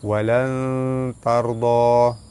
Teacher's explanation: Walan tarda, nun mati bertemu dengan ta, ikhfa hakiki, baca sama-sama nipis serta dengung 2 harakat. Ra mati sebelum dia ada huruf yang berbaris atas, ra dibaca tebal.